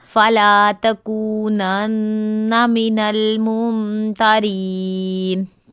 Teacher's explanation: मीम के ऊपर है तो मीम मुशद्दद का गुन्ना, फुल नाक में आवाज पढ़ने का। फला तकूनन्ना मिनल मुमतारीन, तारीन रॉ बारीक अदा होगा।